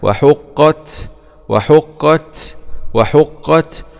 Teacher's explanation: فتحة واء حاء ضمة حو وحو قاف شدة فتحة وحق تاء سكون مع الهمس